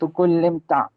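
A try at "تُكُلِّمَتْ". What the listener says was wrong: अभी भी आप मुंह ऊपर खोल रहे हो। मैंने आपको कहा है स्माइल करो साइडवेज और फिर ते के ऊपर जबर पढ़ो।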